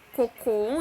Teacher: a última sílaba é a tônica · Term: oxítonas